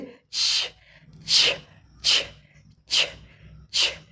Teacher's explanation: हवा जो है उसको दबाव डाल करके आगे निकलती है तेज़ी से, जिससे छ छ छ छ छ की आवाज़ आती है।